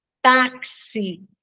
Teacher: na palavra táxi o X tem som de KS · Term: dífono